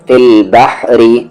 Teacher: فی کو لام فی، با کو ہم بحر، را پر زیر ری، فی البحری. ہا کا مخرج بیچ والا حلق، را یہاں پر لائٹ ہوگا کیونکہ اس کی آواز نیچے جا رہی ہے.